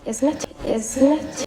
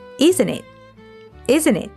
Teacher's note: the T in isn't gets dropped and the word links to it, so the phrase sounds like isn't it? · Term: connected speech